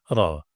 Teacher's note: Jadi lidah itu memantul bergetar ke atas itu cuma satu getaran ra